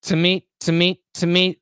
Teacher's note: what's the pronunciation of two it's going to be again a schwa